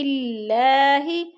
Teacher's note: اللہ کو باریک پڑھا جائے گا کیونکہ اللہ سے پہلے لفظ ہا کے نیچے زیر ہے